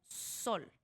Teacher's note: Pon tu mano en la garganta. Di la s como sol. No sientes vibración.